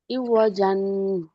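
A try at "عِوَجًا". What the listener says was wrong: ইওয়া জান, এই যে একটা জান গুন্না হয়ে যাচ্ছে, এই গুন্নাটা করা যাবে না।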